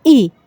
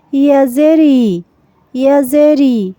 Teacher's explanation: এটাকে কিন্তু আবার হামজার সাথে গুলিয়ে ফেলা যাবে না। হামজার উচ্চারণটা হলো কণ্ঠনালী বা হলকে শুরু থেকে শক্তভাবে, যেমন হামজা জের ই। আর ইয়া হলো নরমভাবে জিহ্বার মাঝখান থেকে ইয়াজেরি, ইয়াজেরি।